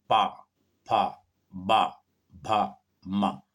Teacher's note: पहले होठ बंद होते हैं और फिर मुंह खुलता है। पहले होठ बंद होते हैं और फिर जो है होठों को खोला जाता है। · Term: ओष्ठ व्यंजन